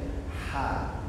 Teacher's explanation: Ha itu keluar dari kerongkongan, seperti orang kepedasan macam huruf X. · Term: huruf ha